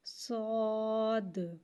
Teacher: صاد حرف مستعلیہ ہے لہٰذا اسے ہم موٹا پڑھیں گے اور صاد میں دال کو کی قلقلہ کو ظاہر کریں گے، صاد، اور صاد میں سیٹی کو بھی ظاہر کریں گے۔ پہلے سیٹی کو ظاہر کریں گے، صاد کو موٹا پڑھیں گے 3 مقدار کھینچ کے، اور دال میں قلقلہ کو ظاہر کریں گے